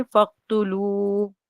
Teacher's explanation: फक, ता को जल्दी पढ़ेंगे। यहाँ हुरूफ मद्दा है लू, और आगे छोटी मद है, तो इसे 3 अलिफ के बराबर खींच के पढ़ेंगे